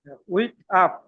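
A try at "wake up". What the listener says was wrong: উইক না বলে ওয়েক আপ। ওয়েক আপ, জাগ্রত হওয়া।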